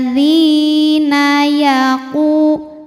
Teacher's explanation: langsung sambung ya jangan sampai nunnya diseret dulu